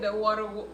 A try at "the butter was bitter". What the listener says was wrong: It's butter. It's butter. It's not water. It's butter.